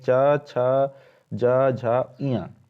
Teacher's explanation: तालव्य, उच्चारण स्थान है तालु, मुंह के भीतर की ऊपरी छत का पिछला भाग,